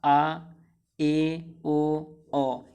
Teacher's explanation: मुंह आपका पूरा खुल जाता था, और अर्ध विव्रत में आपका मुंह आधा खुलता है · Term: अर्ध विव्रत स्वर